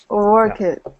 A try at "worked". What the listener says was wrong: Sorry, no extra syllable. Worked. It's sometimes the ED is pronounced as quickly as possible.